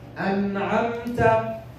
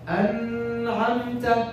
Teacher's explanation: Complete sukoon and short gunna. No extra gunna.